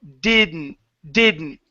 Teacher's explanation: Instead of saying didn't and being really literal and hard with that, take out the D. Didn't. Go straight to the N.